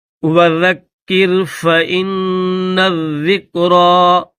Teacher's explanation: را کے اوپر کھڑا زبر ہے تو را کو تھوڑا کھینچ کر پڑھیں گے